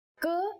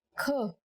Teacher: k is a consonant, and when we say it with aspiration, it becomes another consonant, kh.